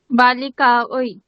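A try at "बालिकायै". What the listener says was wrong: বালিকাयै। শিষ্যা ওই না, এই ওই না, ওই মানে তো এরকমটা হয়ে যাবে, ওই ওই কিন্তু না। হ্যাঁ, শিষ্যা এই, শিষ্যা এই।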